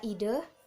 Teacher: bunyi E, posisinya di tengah, di depan, dan tidak bulat